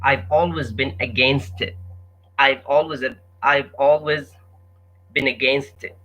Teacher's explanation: You feel like the T against it, like the two T's are made as one T against it.